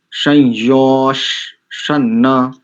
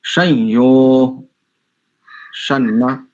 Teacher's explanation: या तो विसर्ग को विसर्ग का उच्चारण करो अथवा उसको अर्ध तालव्य सकार उच्चारण करो या तो संयो सना ऐसा करो अथवा संयो शना ठीक जी